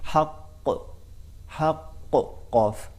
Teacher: قاف کو ایک تو موٹا پڑھا جاتا ہے اور دوسرا یہ ہے کہ اس میں صفت قلقلہ پائی جاتی ہے